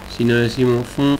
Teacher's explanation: porque estamos soltando por la nariz la vocal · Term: la nasalización